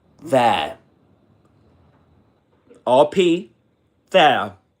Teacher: So this is, how do you pronounce this word? Again, in Southern Standard British English, that's there. There. RP, there, as a diphthong.